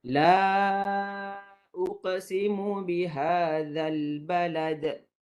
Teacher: 4 ataupun 5 harakat mad jaiz, maka dibaca dengan keadaan 4